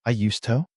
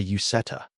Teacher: That is due to assimilation. Because the D in used and the T in to are made in the same place in your mouth, the alveolar ridge. We don't pronounce both.